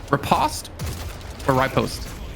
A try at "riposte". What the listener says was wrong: Riposte. I've never heard anyone pronounce it riposte. Like, I've never heard a hard I. No, not riposte. You said riposte. Like, I've heard repost.